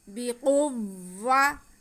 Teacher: بقوۃ آتیناکم بقوۃ، با کے نیچے زیر ہے، قاف پہ پیش ہے اور واو مشدد ہے۔ کاف کا پیش ہم واو کے ساتھ ملائیں گے، لیکن کھینچنا کسی کو نہیں ہے کیونکہ واو پہ بھی زبر ہی ہے۔